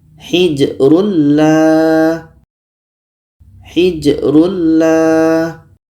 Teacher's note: bunyi tanwin ini kita masukkan ke la masuknya tanwin kepada la itu sudah sempurna karena bunyi tanwin tidak terdengar lagi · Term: idgham bila ghunah